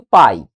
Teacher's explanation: perceba que em pai eu começo no a e desço pro i